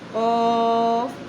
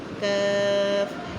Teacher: قاف حروف مصالیہ ہے، موٹا پڑھنا ہے اور کاف باریک پڑھا جائے گا